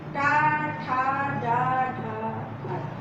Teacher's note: अब ये टा वर्ग आता है जिसको मूर्धन्य बोलेंगे, और ये मूर्धा, और ये मूर्धा भी, ये देखिए ये थोड़ा सा पीछे हो गया है ना, ऊपरी छत में है, तालू में है, लेकिन थोड़ा पीछे।